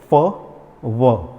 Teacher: मैंने होठों का यूज़ किया है और दांतों का यूज़ किया है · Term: लेबियोडेंटल शब्द